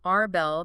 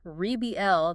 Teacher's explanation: The noun, rebel, the person who fights against authority, stresses the first syllable. The verb rebel, the action of fighting back, stresses the second.